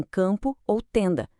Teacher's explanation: Esses são os que acontecem quando uma vogal vem seguida de M ou N na mesma sílaba, como em campo ou tenda. O som da vogal fica nasalado, sabe? O M e o N ali não são consoantes de fato, eles só estão indicando esse som nasal. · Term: vocálicos